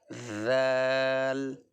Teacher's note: زبان باہر آئے گی، اوپر کے دانتوں پہ لگے گی نوک، اور اس کو نکالیں گے ہم ذال۔